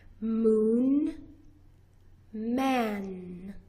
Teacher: You push your lips together and you make a long, smooth, continuous sound. Your voice box is turned on and you're pushing the air and the sound through your nose.